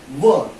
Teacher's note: दंत और ओष्ठ से एक वर्ण बोला जाता है जिसको बोलते हैं व।